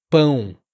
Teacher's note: O som do ão, como em pão, não, coração alemão, ele precisa da nasalização. Então, só para deixar mais claro e ajudar você, ele não é a, ele não é on, ele é pão. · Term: ditongo ão